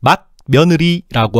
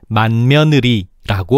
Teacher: 맛의 종성 디귿이 묘의 초성비음 미음을 만났네. 그래서 디귿이 비음 니은으로 바뀌어서 발음되고 있어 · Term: 비음화